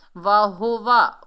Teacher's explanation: वाहुवा, वाव के ऊपर ज़बर, हा के ऊपर पेश, वाव के ऊपर ज़बर, तीनों को बगैर खींचे पढ़ेंगे। वाव को अदा करते वक्त होंठों को गोल करेंगे। हा जो है इसकी भारी साउंड है, ये सीने से अदा होगा।